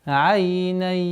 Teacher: Частичная ассимиляция с удержанием назализации в размере двух огласовок.